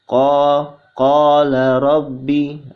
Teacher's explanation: huruf qa bertemu dengan huruf alif, ya, dibaca panjang 2 harokat atau hukumnya matobi'i.